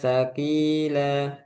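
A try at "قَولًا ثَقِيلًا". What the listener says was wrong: Saki, nggak ada udara.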